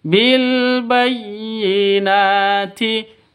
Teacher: tasydid itu seperti itu, bayyinati, begitu ya, ditangkap terus dilepas